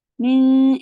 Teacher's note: नून की आवाज को छुपाएंगे काफ की तरफ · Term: इख्फा